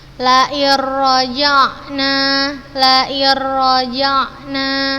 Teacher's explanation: Ustazah masukkan langsung ke huruf ro dan tanpa disertai gunnah. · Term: idgham bila gunnah